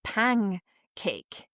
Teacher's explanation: But what happens is while you're doing the nasal in the middle there, the N, your throat is already anticipating that, like, after this, I'm going to do a K sound. So you get this nasal that like becomes a K a little bit in the middle. And that actually is it's sort of like velar nasal almost.